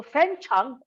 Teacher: fen is a high rising pitch and chang is a low dipping pitch